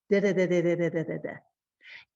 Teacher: you see the tip of my tongue touches right behind my teeth. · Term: flap sound